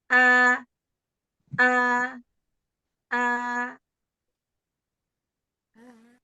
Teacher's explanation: Hamzah kan dari makhraj yang memang ee masih tertutup terus diberi harakat jadi terbuka